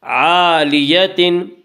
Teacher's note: جنت عالیہ، الف مدہ، الف ہمیشہ مدہ ہوتا ہے، الف سے پہلے ہمیشہ زبر ہوتا ہے، الف مدہ کو ایک الف کے برابر کھینچ کر پڑھیں گے